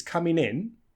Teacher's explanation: it's a phrasal verb coming in so we stress the in a little bit more